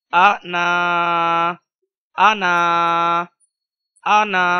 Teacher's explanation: آ کو ہم چھوٹی آواز کے ساتھ ادا کر رہے ہیں اور نا کو ہم لمبی آواز کے ساتھ ادا کر رہے ہیں